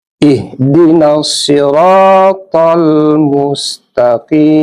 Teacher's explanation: Kemudian ra itu ada mad asli. Mad asli alif, panjangnya 2 harokat.